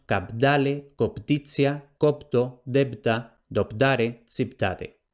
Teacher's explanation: la síncopa, es decir, la pérdida de la vocal, unas veces la que está inmediatamente antes, otras veces la que está inmediatamente después.